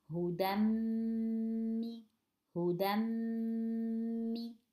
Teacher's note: From del, it's like there is del fatha only, and then going to the meme, and we have to stretch a little bit the meme, the ghunna of the meme, because ghunna, noon and meme, they always have ghunna.